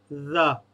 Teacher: آپ کی زبان جو ہے وہ دونوں دانتوں کے درمیان میں آئے تو یہ جو ہے بغیر سیٹی کے یا بغیر تیزی کے جو ہے وہ ادا ہوتا ہے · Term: ذال